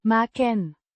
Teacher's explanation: with a short A similar to the a in cat and a short e sound at the end of the last syllable